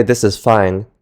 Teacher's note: we use a relatively flat pitch with a subtle drop-off in pitch at the end